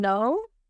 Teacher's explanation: we are going to use the tip of our tongue and we are going to touch our upper gum ridge like this. And after that, we are going to use the back of our tongue to block the air to flow out of our mouth.